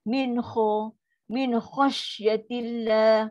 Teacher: Jangan min kha. Mulut tak muncung tak ada kena-mengena. Kha halkum. Tak ada kena dengan bibir. Benda berlaku di dalam saja. · Kha pangkal lidah naik. Dia adalah sifat yang tinggi. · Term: huruf kha